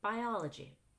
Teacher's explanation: Biology has its own chunk, and I rise on the O in biology, and then I fall on the end of that word.